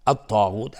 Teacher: طا از حروف استعلاء غلیظ تلفظ میشه